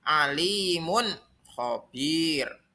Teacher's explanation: cara membaca izhar halqi yaitu harus dibaca jelas tanwinnya